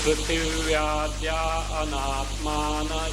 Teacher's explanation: Visarga gets dropped because of the vowel that follows.